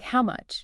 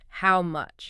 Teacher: So you really have to overexaggerate that upward inflection.